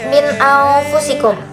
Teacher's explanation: Apabila nun mati atau tanwin bertemu dengan huruf hamzah, ain, ha, wan, ho, maka hukum tajwid yang ada itu izhar halki. Jadi cara bacanya itu dia jelas tanpa dengung.